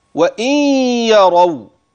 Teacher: من الواو بعدها غنة ثم تنتقل للياء